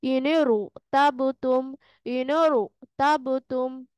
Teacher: অর্থাৎ কাছরা আরজি মানেই হচ্ছে ক্ষণস্থায়ী একটা জের এখানে হবে হইলে এই র কে আমরা পোর করে পড়বো অর্থাৎ গোল করে পড়বো